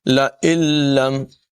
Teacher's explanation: تطیرنا بکم لئن لم تنتہوا، لئن لم، نون یہاں پر نہیں پڑھا جائے گا، لئن لم نہیں پڑھیں گے، حمزہ کو لام سے ملا دیں گے، حمزہ لام سے مل جائے گا، نون نہیں پڑھا جائے گا۔ لئن لم، نون ساکن کے بعد لام حروف یرملون میں سے، یہاں پر ادغام ہوگا لیکن غننے کے بغیر